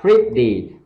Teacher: Anh Mỹ đọc là pretty, tức là short i và âm long i đằng sau